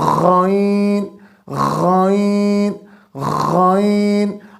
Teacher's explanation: اگر میں اس پین کو یا فنگر کو دبا کے رکھتا ہوں تو پریکٹس کرتے ہیں، غائن بولنے میں مشقت ہو رہی ہے، ٹھیک ہے، زور لگ رہا ہے، حرف بھی پورا ادا نہیں ہو رہا، گویا کہ غائن کا تعلق حلقی مخارج میں ادنی حلق سے ہے، یعنی کہ گلے کے شروع والا حصہ سے ہے۔ ہم نے وہاں سے اس کو نکالنے کی کوشش کرنی ہے، بار بار اس کی پریکٹس کرنی ہے، تب جا کے غائن کا مخرج صحیح طریقے سے ادا ہوگا۔